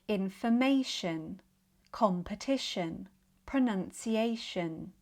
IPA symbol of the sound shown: ʃən